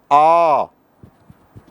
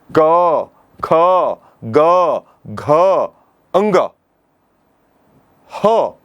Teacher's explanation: क ख ग घ अंग ह और विसर्ग का उच्चारण अः तो इतने वर्णों का जब हम उच्चारण करते हैं तो जब वायु बाहर आता है तो कंठ में दबाव पड़ता है। इसलिए इन वर्णों को कंठ्य वर्ण कहते हैं।